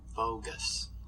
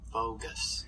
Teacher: So we're going to go bilabial, velar, alveolar.